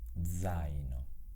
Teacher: con il suono della Z che è sonoro all'inizio di una parola